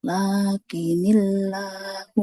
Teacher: lam yang ada pada lafaz Allah itu pasti panjang ibu. Meskipun secara La- tanda nggak ada huruf matnya. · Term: lam jalalah